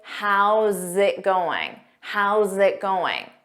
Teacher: You cannot say how is it. Going. With spaces between, you must say, how's it going?